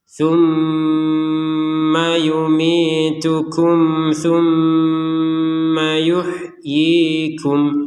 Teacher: tumma itu kurang lebih dua harakat atau dua ketukannya